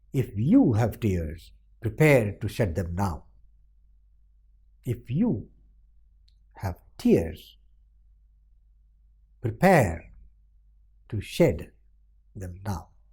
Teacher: The stress was on you, on tears, on pair, on shed, and on now.